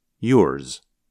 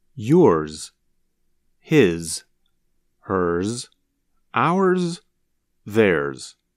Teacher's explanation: the sound of Z is not as strong, or as long as in a word like zero. Instead, it's more like a z with a little s at the end.